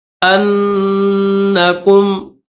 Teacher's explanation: ہادو ان زعمتم، زعمتم، عین میم زبر عم، تا میم پیش تم، زعمتم انکم، حمزہ کو نون کے ساتھ ملائیں گے، نون کے اوپر تشدید ہے تو حمزہ کو نون کے ساتھ ملا کر غنہ کریں گے